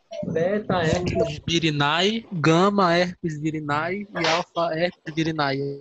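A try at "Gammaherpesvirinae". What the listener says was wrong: Gama herpes virini, tá? Não é virinae, virini, a pronúncia.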